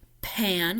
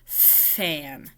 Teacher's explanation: changing it to a fricative or a sound that has airflow